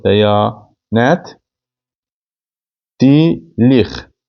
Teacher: Dəya uzun tələffüz olunur.